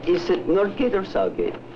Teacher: the intonation of the Russian speaker is characterized by a sharp drop after the or